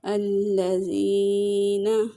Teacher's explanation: ذال کو سافٹ نرم پڑھیں گے اور 1 سیکنڈ کے برابر لمبا کریں گے کیونکہ یہاں پہ یا مدہ ہے۔